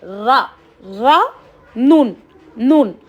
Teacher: ज़ुबान की नोक ऊपर के 2 दांत को लगने से रा और नून अदा होता है।